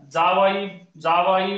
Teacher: च, छ, ज, झ हे चार वर्ण जे आहेत हे तालव्य वर्ण तर आहेतच. तालव्य वर्ण तर आहेतच. परंतु यांचा उच्चार करताना जीभ दाताला सुद्धा स्पर्श करते आणि म्हणून स्पर्श कुठल्या अवयवाला करायला याच्यावरून आपण याला तालव्य वर्ण म्हणू शकतो किंवा दंत तालव्य वर्ण म्हणू शकतो.